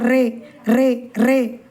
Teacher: அந்த ர உச்சரிக்கும் போதே நாக்கு சொலண்டு வரும். எப்படி வரும் ர் இந்த பாப்பா சொல்ற மாதிரிதான் ஏன்னா நாக்க வச்சு வண்டி ஓட்டுங்கல்ல அதே மாதிரிதான். · அதுக்கடுத்து பாருங்க இந்த ஒரு எழுத்தை மட்டும்தான் ரே இதோட பத்தாவது எழுத்து ஆயிட்டு ரே இரு உதடுகளையும் சேர்க்க வேணாம் பற்களையும் சேர்க்க கூடாது நாவினுடைய வலது ஓரம் முழுவதும் கடவாய் பற்களின் ஈர லேசா தொடணும். குரல் வந்து சுழலோசையுடன் வெளிப்பட வேண்டும்.